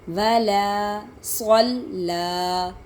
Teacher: صاد کو موٹا پڑھیں گے اور لام کو باریک ہی پڑھیں گے